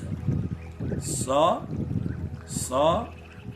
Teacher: दन्त्य स भनेको जुन स बोल्दाखेरि जिब्रो दाँतमा ठोकिन्छ त्यसलाई दन्त्य स भनिन्छ, बिचमा यसो चिरेको।